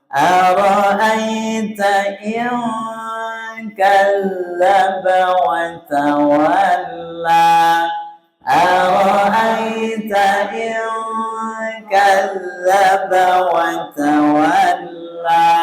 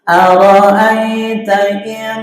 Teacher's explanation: Jadi baca in hampir NG, hampir. Jadi tidak boleh langsung seperti NG, tapi hampir.